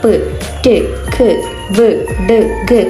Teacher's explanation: എയറിനെ complete ആയിട്ട് close ചെയ്യപ്പെടുകയും complete ആയിട്ട് വായിൽ തടസ്സപ്പെടുത്തുകയും പിന്നീട് അത് റിലീസ് ചെയ്യപ്പെടുകയും ചെയ്യുന്നു. മീൻസ് കംപ്ലീറ്റ് എയറിനെ ക്ലോസ് ചെയ്യുകയും നമ്മൾ സ്പീച്ച് ഓർഗൻസ് വെച്ചിട്ട് കംപ്ലീറ്റ് ക്ലോസ് ചെയ്യുകയും പിന്നീട് എയർ റിലീസ് ചെയ്യപ്പെടുകയും ചെയ്യുന്നു. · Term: പ്ലോസീവ്സ്